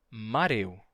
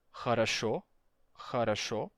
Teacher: o som de O, quando ele aparece em posição átona, ele se torna A na maioria dos sotaques do russo